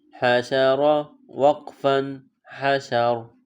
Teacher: را زبر ر، حشر. اب وقف میں آخری حرف سائلنٹ ہو جائے گا